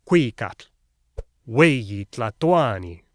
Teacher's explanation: they stressed the second to last syllable